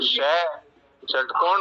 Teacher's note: और जो शह षटकोण वाला है वो मूर्धा से बोला जाता है, तो वो मूर्धन्य है।